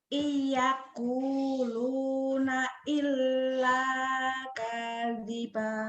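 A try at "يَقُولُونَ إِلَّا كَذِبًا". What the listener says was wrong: Salah, kanya pendek. Kadiba.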